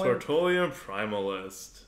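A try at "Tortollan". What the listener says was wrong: It's not Tortolian. It's Tortolan. There's no I in there. It's not like Tortellini or whatever. You always add an I in there.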